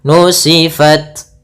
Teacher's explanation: ta itu adalah syiddah. Syiddah itu tertahannya suara. Kemudian hamas mengalirnya suara.